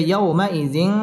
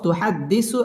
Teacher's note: তানবিনের বামে তা আসছে তা ইকফার হরফ গুন্না করে পড়তে হবে